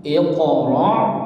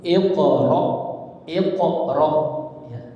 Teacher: Setelah huruf ro itu ada hamzah sukun, maka dibaca seperti titik tak. Hati-hati jangan sampai seperti ain.